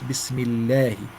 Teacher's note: The lam of Allah, if it has a kasra before it, it must be light. Bismillahi, you smile, big smile.